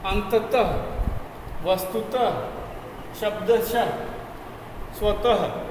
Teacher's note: अंतिम वर्ण के बाद में जैसे यहाँ त था प्रातः, तो ह का हल्का उच्चारण हमें करना है। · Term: विसर्ग